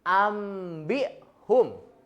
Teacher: Jadi bacanya itu si nunnya itu diganti sama mim. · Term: iqlab